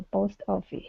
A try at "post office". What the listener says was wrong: give me a little bit more oh sound